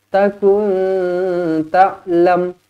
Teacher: Nun kosong bertemu dengan ta, ikhfa hakiki dengung dua harakat.